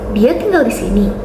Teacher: Diujarkan dengan intonasi naik secara tajam di akhir silabel. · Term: intonasi interrogatif